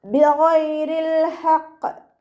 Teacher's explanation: ഗൈനിൻ്റെ മഖ്റജ് അദ്നൽ ഹൽക്ക്, തൊണ്ടയുടെ ആദ്യ ഭാഗം. സൗണ്ട് അയിനായി പോവാതെ ശ്രദ്ധിക്കുക കേട്ടോ.